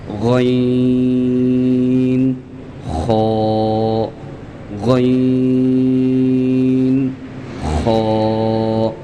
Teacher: अदना हलक यानी गले का वो हिस्सा जो शुरू में है जो मुंह की जानिब है। गले का वो हिस्सा या हलक का वो हिस्सा जो मुंह की जानिब है वहां से गन और ख अदा होते हैं · غین اور خا ادا ہوتے ہیں ادنیٰ حلق سے۔ ادنیٰ حلق یعنی گلے کا وہ حصہ جو شروع میں ہے، جو منہ کی جانب ہے، گلے کا وہ حصہ یا حلق کا وہ حصہ جو منہ کی جانب ہے، وہاں سے غین اور خا ادا ہوتے ہیں۔